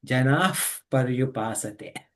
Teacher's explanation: whenever pa comes after a visarga, then it makes fa sound